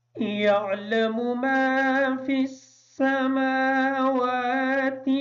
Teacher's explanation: میم پر کھڑی زبر ہونے کی وجہ سے میم اور واو کو تھوڑا سا لمبا کر کے پڑھیں گے۔ وَيَعْلَمُ کی جو عین ہے اس کو کلیئر کریں گے۔